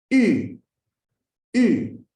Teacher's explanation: Para pronunciarlo tenemos que poner la lengua como para hacer una I, y luego redondear los labios como para hacer una U. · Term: U francesa